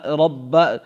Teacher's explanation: ربہم، را کے اوپر زبر ہے اس لیے یہ را پر ہوگا، با زبر با، رب، اس پر با مشدد ہے تو اس با مشدد کے پڑھنے میں جھٹکا ہو جائے گا یعنی سختی